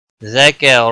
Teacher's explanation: کاف باریک پڑھا جائے گا اور را موٹا پڑھا جائے گا، را کے اوپر زبر ہے۔